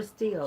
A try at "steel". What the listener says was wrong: You got that accent. So I don't know if you're saying still or steel.